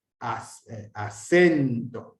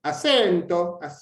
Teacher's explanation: Una cosa es hacer un acento de intensidad, acento, que hacer un acento tonal. Acento, sube el tono, como en la música.